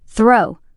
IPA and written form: θroʊ (throw)